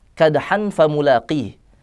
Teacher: karena fa-nya itu tipis dan terbuka, maka ikhfa-nya pun tipis dan terbuka